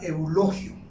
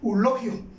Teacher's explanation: prácticamente ella está omitiendo el diptongo y eso es incorrecto